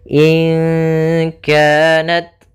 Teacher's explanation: Hamas yaitu jaroyanu an-nafs, mengalirnya nafas kita. Sehingga huruf ta-nya harus ada sedikit hamasnya, tapi jangan banyak-banyak.